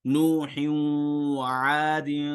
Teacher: تنوین کے آخر میں ہم جب پڑھتے ہیں با دو زیر بن، تو ہم آخر میں ایک نون پڑھ رہے ہوتے ہیں، وہ نون واو میں چلا گیا